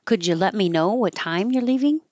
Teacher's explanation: I put the emphasis on time